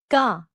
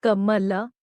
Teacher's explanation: Here, the back of the tongue touches the soft palate or the velum, producing velar sounds. The first consonant of the Ka Varga is Ka.